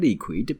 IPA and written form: ˋlɪkwɪd (liquid)